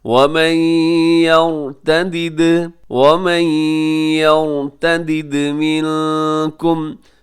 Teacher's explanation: یہاں یر میں را موٹا ہے، آگے دال قلقلہ ہوگا، دال ساکن ہے